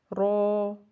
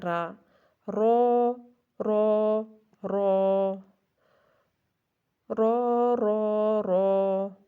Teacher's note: را کو جو ہے وہ ہم کیسے ادا کرتے ہیں؟ زبان کی نوک کی پشت کو اوپر کے سامنے والے 4 دانتوں کے مسوڑوں سے لگا کر موٹی آواز میں